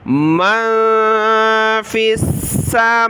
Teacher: من فی السماوات, فا کو سین کے ساتھ ملا, سین کو سخت کیا تشدید کی وجہ سے, اور میم اور واو کے اوپر کھڑا زبر ہے, دونوں کو ایک الف کی مقدار اوپر کی طرف کھینچنا ہے